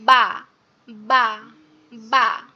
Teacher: তো বাটা উচ্চারণের ক্ষেত্রে আমাদের দেখেন এই যে বাটা যেটা আমরা দেখতে পাচ্ছি বা, এই বা উচ্চারণের ক্ষেত্রে আমাদের কি করতে হবে, আমাদের এই যে দুই ঠোঁট আছে না, দুই ঠোঁটটা সামনের উপরের ঠোঁট এবং নিচের ঠোঁট একসাথে আটকাবেন, আটকায়ে তারপরে ছেড়ে দিলে যেমন উচ্চারণ হয়